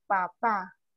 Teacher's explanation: Son sonidos que explotan, entonces es oclusivo